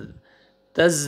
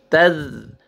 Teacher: تز نہیں پڑھنا ہے ذال ہے لائٹ سے ساؤنڈ آئے گا ذال کا